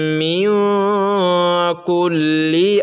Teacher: نون کی آواز کو ناک میں چھپا کر پڑھنا ہے اور نوکے زبان تالو سے ہٹا کر۔ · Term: اخفا